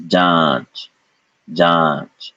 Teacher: chandrabindu has become ja followed by so this is john john there is no n sound here it's a nasalized vowel